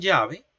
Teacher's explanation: no es extraña para nosotros esta fricativa palatal sonora porque la empleamos en todos los contextos